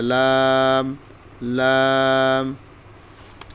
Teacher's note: জিহ্বার আগার কিনারা সামনের উপরের দাঁতের বাড়ির সঙ্গে লাগাইয়া